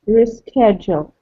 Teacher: It has 4 syllables also, and the stress is on the second syllable